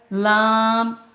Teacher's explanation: জিভের ডগার কিনারা ওপরের দাঁতের গোড়ার সাথে লাগিয়ে উচ্চারিত হয়